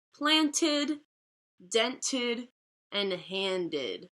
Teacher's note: So those words all make the sound id at the end.